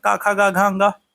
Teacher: तो क वर्ग तो कंठ में आता है